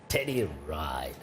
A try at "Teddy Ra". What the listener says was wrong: Yeah, and it's not Teddy Ride, it's Teddy Ra. Because that's how you say it in Liberia.